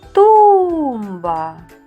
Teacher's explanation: наголос падає на у